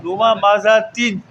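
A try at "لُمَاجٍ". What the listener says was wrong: ममा जा तीन नहीं करें आप डबल नहीं लूमा जा तीन जा तीन जा तीन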